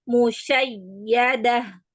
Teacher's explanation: Jadi huruf ya yang bertasdid dan wau yang bertasdid itu cara membacanya dengan meninggikan nadanya. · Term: nabr